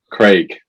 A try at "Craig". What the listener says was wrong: I see that you sound like Greg now. It actually sounds like Greg when you say it.